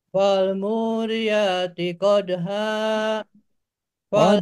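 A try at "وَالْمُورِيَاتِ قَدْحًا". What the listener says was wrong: Qadha. Tuh, datar.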